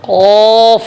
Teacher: ये फ इस तरीके से कौफ बड़ा वाला कौफ जबान की जड़ जबान की जड़ और उसके बराबर जो ऊपर का तालु है यह तालु कहलाता है। जबान की जड़ और उसके बराबर ऊपर का तालु यहां से कौफ अदा होगा। कौफ जबान की जड़ को अपनी जगह रखेंगे।